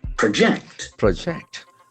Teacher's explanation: If it is a verb, the accent shifts to second syllable.